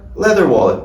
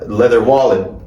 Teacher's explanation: A gente não vai falar leather wallet. A gente não vai colocar o ênfase na segunda palavra.